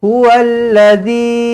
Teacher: huallazzi panjangkan dia empat ataupun lima harakat tak lama-lama pun Bukan suruh 14 harakat 15 harakat 50 harakat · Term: Mad Jaiz munfasil